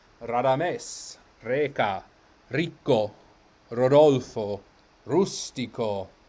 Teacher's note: So R is either flipped when it's single or rolled when it is doubled. So these are all initial R's which are flipped, unless something before it causes it to be doubled.